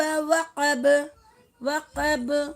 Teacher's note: ब के ऊपर क़लक़ला लिया हमने